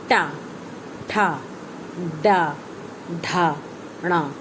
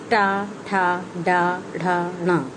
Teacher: इनको मूर्धन्य कहा जाता है क्योंकि इसका उच्चारण करते समय जीभ मूर्धन्य यानी ऊपर उठी हुई महसूस करेगी